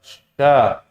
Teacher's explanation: Jadi udara di mulut semua menyebar ketika huruf itu disebutkan. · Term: tafasyi